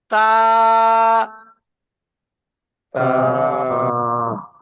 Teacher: জিভের আগাটা সামনের উপরে 2 দাঁতের গোড়ার সাথে লাগান, লেগে উচ্চারণটা করেন।